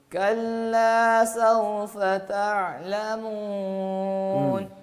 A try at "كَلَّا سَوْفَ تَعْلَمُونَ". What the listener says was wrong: ناک میں نہ لے جائیں آواز کو, تعلمون نہ کہیں, تعلمون.